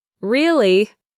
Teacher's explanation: you can use it to show you're not so interested with a downward intonation